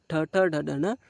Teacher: ಡ ಡ ನ ಏನ್ ಮಾಡ್ರಿ ಉಚ್ಚಾರ ಮಾಡ್ರಿ ಟ ಟ ಡ ಡ ನಿಮ್ಮ ನಾಲಿಗೆ ಏನ್ ಮಾಡ್ತೈತಿ ಮೇಲ್ಭಾಗಕ್ಕೆ ಹೋಗಿಬಿಡ್ತೈತಿ ಹಲ್ಲಿನ ಮೇಲ್ಭಾಗಕ್ಕೆ ಹೋಗಿಬಿಡ್ತೈತಿ ಅದನ್ನೇ ಏನಂತ ಕರೀತೀವಿ ನಾವು ಮೂರ್ದ ಅನ್ನುತ್ತೇವೆ ಈ ಶಿರಸ್ಸನ್ನೇ ಏನಂತ ಕರೀತೀವಿ ನಾವು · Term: ಮೂರ್ಧನ್ಯ